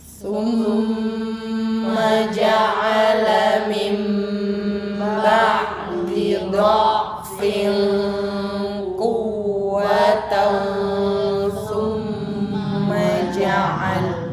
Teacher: Ada aliran udara dulu ya, terus ya. Jadi jangan langsung sum.